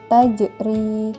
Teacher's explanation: huruf Jim yang disukun maka cara membacanya harus dipantulkan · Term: Qalqalah